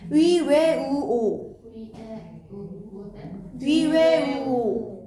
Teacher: 입술 모양이 둥글게 오므려지는 거고요. 입술 모양을 둥글게 하면은 입술이 돌출되지. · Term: 원순모음